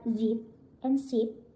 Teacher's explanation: In my first language, Bahasa Indonesia, we rarely use the Z sound. Many Indonesian speakers pronounce Z like S. So words like zip and sip might sound the same. This makes it a bit difficult to distinguish and pronounce Z correctly, especially in the beginning.